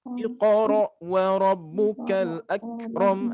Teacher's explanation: Di sini huruf kaf, ya, bukan huruf qaf. Jadi nanti jangan sampai memantul.